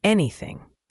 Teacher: The th in anything is similar to the th in thank you. That soft th sound where your tongue is slightly between your teeth.